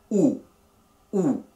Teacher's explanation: o los labios están redondos y un poco cerrados o y para la u la boca se cierra un poco más y los labios permanecen redondos